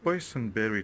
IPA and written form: ˈbɔɪzənbɛri (boysenberry)